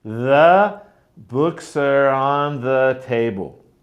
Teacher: the stressed words are books and table